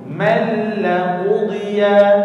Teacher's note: Perlu dimasukkan bunyi tanwin itu ke dalam huruf lam. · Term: tanpa dengung